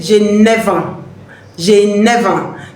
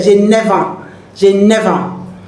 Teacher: the F, letter F, is connecting to the vowel, which is A, and it's giving you a sound like a V there